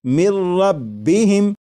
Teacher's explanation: لکھا ہوا ہے من، لیکن جب نون ساکن کو را میں ملا کر پڑھیں گے تو پھر نون ساکن کی آواز نہیں آئے گی، بلکہ میم کے بعد را کی آواز آئے گی، اور یہاں پر غنہ نہیں کریں گے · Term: ادغام